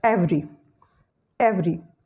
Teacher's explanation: the schwa sound after V is deleted and you will pronounce it as every